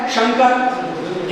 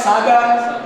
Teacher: एक तो तालव्य श है शंकर एक दंत स है सागर